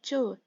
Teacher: तालू से, तालु च, आप बोलोगे तो च, दांत के पीछे और मूर्धा से आगे जो हिस्सा है वहां से बोला जा रहा है च। ठीक है, और मूर्धन्य से ट।